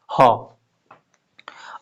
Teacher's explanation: और ह जो है वो कंठ में होता है, स्वर यंत्र यहां पे होता है कंठ में, तो हम उसको स्वर यंत्र में घर्षण बोलेंगे